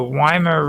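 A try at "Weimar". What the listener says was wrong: primer even though it it's got a W in the Germans pronounce a V.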